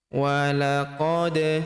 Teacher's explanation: Kemudian walaqad ra'ahu, walaqad, huruf da berharokat sukun kita pantulkan atau kita qalqalahkan